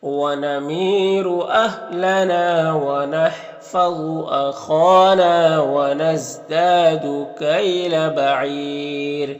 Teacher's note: را کو باریک پڑھیں گے کیونکہ اس سے پہلے یا ساکن ہے